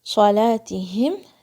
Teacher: ہا کی آواز حلق کے سب سے نیچے سے آئے گی ٹھنڈی سانس کی طرح. صلاتہم، میم کو آپ نے شیک نہیں کرنا ہے. · اخفا بھاری ہو جائے گی کیونکہ نیکسٹ لیٹر بھاری ہے